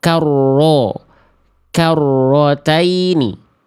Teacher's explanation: Kalau diok-kan otomatis natural kita monyong mulutnya karena ngejar vokal O.